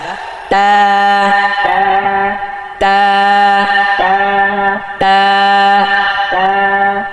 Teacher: জিহ্বার আগা সামনের ওপরের 2 দাঁতের গোড়ায় লাগিয়ে, জিহ্বার আগা দাঁতের গোড়া